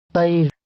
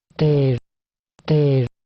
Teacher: the first formant at the beginning of the vowel of the high register word is higher than f1 at the beginning of the vowel of the low register word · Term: register contrast